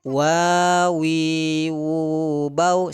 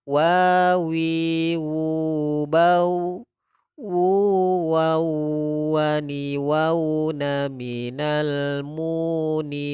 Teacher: Huruf wawu di sini makhrajnya keluar dari paduan bibir atas dengan bawah. Contoh huruf wawu ini wawi wubau, sifatnya yaitu layin ya, maka kita sebut dengan mat layin, lembut.